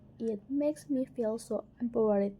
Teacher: the pitch rise up and then drops sharply on it makes me. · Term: rise fall tone